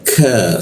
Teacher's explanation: lidahnya kita turunkan sehingga udara terbuka dan ada hembusan udaranya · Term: Huruf K